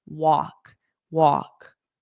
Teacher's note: the L in walk is totally silent. Just ignore it.